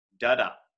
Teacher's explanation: it's an unstressed followed by a stress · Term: iamb